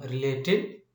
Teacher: this root word has the stress on late